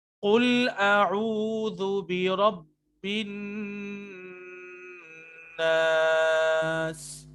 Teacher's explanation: قوف موٹا ہے اور رو موٹا ہے, اس کے علاوہ کوئی موٹا نہیں ہے